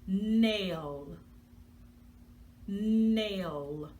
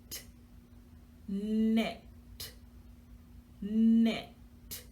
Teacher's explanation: But in this particular section of the video, when we make our N sound, we're taking the tip of our tongue, we're tapping it on the roof of our mouth behind our teeth, and we're funneling that sound through our nose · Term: nose sound